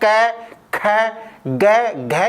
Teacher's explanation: जो क वर्ण है इसका उच्चारण स्थान क्या है कंठ यानी कि कंठ से बोल जाते हैं